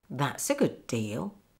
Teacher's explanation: Stress on that and stress on deal.